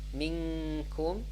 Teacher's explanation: the nun or the ikhfa sound is light because it's kaf is light